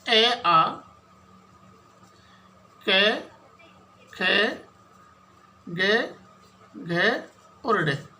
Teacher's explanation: तो कंठ से सीधी ध्वनि बाहर आ रही है